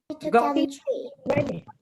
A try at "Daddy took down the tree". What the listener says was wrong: You're saying it too fast, and then there's like other sound. Say it one more time.